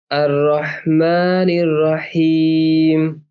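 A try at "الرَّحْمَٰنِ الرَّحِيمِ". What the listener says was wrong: Good. और रॉ को पूरा कर लीजिए। और माँ में ध्यान रखिएगा, आगे भी कभी आए तो माँ बोलना है, मौ नहीं बोलना है ना, नहीं करना है। और रहीम।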